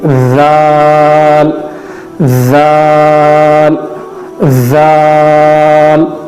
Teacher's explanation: اوپر اور نیچے کے دانتوں کے درمیان میں زبان کی نوک کا تھوڑا سا حصہ ہم نے لایا